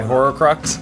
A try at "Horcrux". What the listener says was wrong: You always say it's horror crux. It's Horcrux. Horcrux. H-O-R-C-U-R-X. Horcrux.